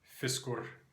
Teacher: in modern Icelandic, the letter Y and the letter I sound the same